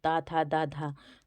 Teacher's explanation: त था द धा तो ये हम बोलते हैं दंत से